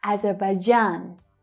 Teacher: So the stressed syllable here is actually the last one.